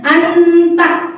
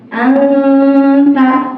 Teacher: kita samarkan nunnya ke huruf ta an ta Letakkan lidah agak ke gigi atas tapi jangan menyentuh